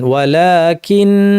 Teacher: ওয়াকফের কথা যেটা আমরা বলছিলাম, যদি কোনো কারণে এই তাসদিদ যুক্ত নুনে আমি ওয়াকফ করি, থেমে যাই, তখন নিয়মটা কী হবে, গুণনাটা লম্বা করে তবেই আমাকে থামতে হবে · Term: গুণনার বিধান